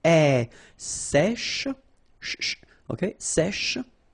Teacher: we've got this E accent grave here. So it's really open.